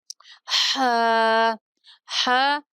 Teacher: حروف حلقی میں سے ہے جو وسط حلق سے نکلتا ہے۔